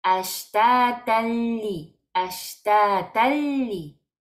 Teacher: Un tanwin no alineado, seguido de lam, decimos ashtatalli, ashtatalli. Y no aguantamos la lam porque es tanwin, es idgham sin gunna